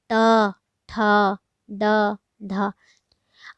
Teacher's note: तो इसमें आपका आ जाएगा जैसे तालु या मूर्धा। जो तालु या मूर्धा भाग को बोलते हैं वहाँ से आपका उच्चारण निकलता है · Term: मूर्धन्य